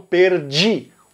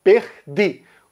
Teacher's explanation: Pernambuco, ele não faz a palatalização da letra D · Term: D duro